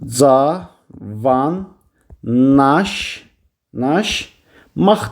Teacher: Yəni ki, L-nın N-ya keçdiyini görürük, Q-nın da X-ə keçdiyini görürük. Yalnız qalın açıq saitlər işləmişdir.